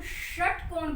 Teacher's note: और जब हम ये षटकोण बोलते हैं, आप खुद भी बोलकर देख लीजिए, जब हम षटकोण बोलते हैं तब जीभ को अंदर की तरफ खींचकर रोक लेते हैं, और फिर हवा को रगड़ते, तालू से रगड़ते हुए बाहर फेंकते हैं, तब वो ये वाला षटकोण, श और षटकोण वाला जब बोलते हैं तब जीभ को थोड़ी सी अंदर की तरफ खींचते हैं और तालू से रगड़ते हुए हवा को बाहर फेंकते हैं, तब ये वाला श बनता है षटकोण।